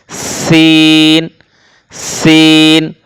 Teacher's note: যা ইজুলজিলাতিল আউ যা এবং একই মাখরাজ থেকে আরো দুটি বর্ণ উচ্চারিত হয় সদ সিন যেবার আগা সামনের নিচের দুই দাঁতের পেট ও আগার সঙ্গে লাগিয়ে উচ্চারণ করতে হয় সিন সিন এটি শিরশির ও পাতলা আওয়াজ হবে